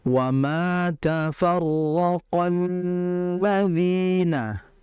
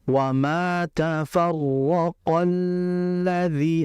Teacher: ketika qof ingin berpindah ke lam cukup dimasukkan saja tapi jangan lama-lama